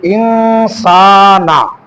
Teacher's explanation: নুন সাকিনের পরে সিন এজন্য ইকফা গুন্না হবে